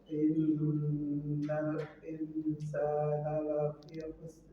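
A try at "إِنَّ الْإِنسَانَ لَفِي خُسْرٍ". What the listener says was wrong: Khusr. Nah, dilatih untuk biar tebal ra-nya. Khusr, ra.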